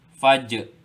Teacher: Jim juga adalah huruf qalqalah. Maka kena bunyikan lantunannya. Fajr. Je, lepas tu terus masuk kepada tempat keluar huruf ra.